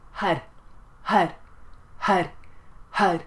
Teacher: And as you chant the mantra, it's spelled H-A-R, but it sounds a little bit more like H-U-D because as you chant it, you're going to bring in the navel, Har, Har, Har, Har. And for the R, you're going to flick your tongue against the ridge behind your top teeth